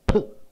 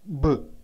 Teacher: So P is unvoiced, B is voiced